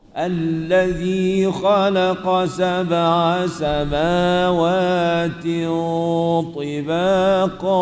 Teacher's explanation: dengung tin itu dengan keadaan dengung itu kena bunyi tebal. Pasal apa dengung itu kena tebal? Pasal huruf ta selepas dia tu tebal. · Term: dengung ikhfa